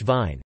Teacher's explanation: voiced labiodental fricative, as in English vine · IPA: [v]